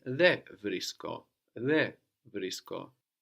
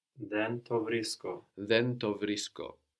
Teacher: you may hear and see in writing the N of then being dropped before certain sounds.